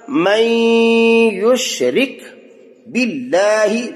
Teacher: باللہ لفظ اللہ کو باریک پڑھنا ہے